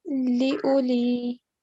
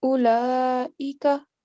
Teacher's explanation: the wow is blank, so make sure you don't prolong it. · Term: blank letter